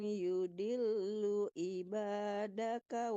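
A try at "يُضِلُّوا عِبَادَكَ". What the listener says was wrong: Yudillu ibad. Tebalkan juga botnya. Yudillu.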